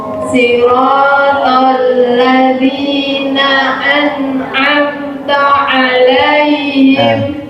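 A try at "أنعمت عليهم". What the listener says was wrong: An'amta an'amta. Fathahnya sempurna. An'amta. Jadi taknya disempurnakan fathahnya.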